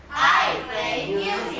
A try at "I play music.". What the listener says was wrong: Nah, itu naik turun. Jangan I play music. Terlalu datar. I play music.